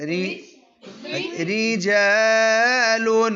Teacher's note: را زیر والی ہو تو باریک پڑھنی ہے